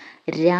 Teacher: ഉദാഹരണം വരുന്നത് രയാണ് നമ്മൾ നേരത്തെ പറഞ്ഞ കമ്പിതത്തിനോട് ഏകദേശം സാമ്യമുള്ള അക്ഷരം തന്നെയാണ് ര എന്ന് പറയുമ്പോൾ നമുക്ക് ചെറിയൊരു വൈബ്രേഷൻ ഉണ്ട് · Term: ദൃതസ്പർശം